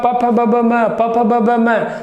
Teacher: इसी बार प तो बार बार जो है एक और दूसरे ओठ को स्पर्श कर रहा है, इसलिए ओष्ठ वर्ण कहलाएंगे प वर्ग वाले।